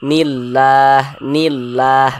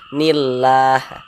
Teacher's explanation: lam jalalah yang terdapat pada lafaz Allah ini dibaca tipis atau dibaca tarkik begitu. Sehingga ini dibaca nillah, nillah begitu.